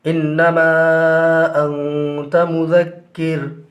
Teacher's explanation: انما میں جو نون ہے وہاں نون مشدد ہے، لہٰذا غنہ ہوگا، اور حرف مدہ یعنی الف کے بعد حمزہ دوسری کلمہ میں ہے تو یہاں پر مد منفصل ہوگا۔